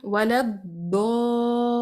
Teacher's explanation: मद के बाद शद्दा आ रही है, लिहाजा आपने इसको 6 काउंट स्ट्रेच करना है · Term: मद लाजिम कलमी